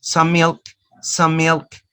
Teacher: Two consonants, they are the same. You just produce one consonant sound. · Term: gemination